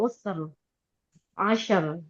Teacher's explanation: Kalau wakaf dengan sukun dia tebal Bu. Usr. Asyr ya tebal.